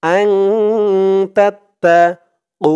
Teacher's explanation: ইল্লা আং তাত্তাকু, তা দিয়ে তা ধরবে, তা তা জবর তাত, তা জবর তা, তাত্তা, আং তাত্তা কু, কু এক আলিফ টান পেশের পরে ওয়াও সাকিন